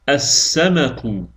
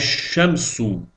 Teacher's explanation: bu sözlərin tələffüzündə əl artiklının ləmi tələffüz olunmur. Əəzinə şəmsiyə hərf şəddəli tələffüz olunur.